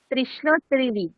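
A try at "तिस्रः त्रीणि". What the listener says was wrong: হ্যাঁ, তিস্রঃ ত্রীণি, খুব ভালো।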